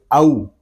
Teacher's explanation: یہاں واو لین ہو رہا ہے اور ہونٹوں کی گلائی سے ہم اس کو ادا کریں گے